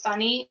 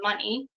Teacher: because there's another nasal sound in the word so for funny the n Sound is the nasal sound and the f is the non-nasal but because there's a nasal sound in there they're turning funny into money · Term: nasal assimilation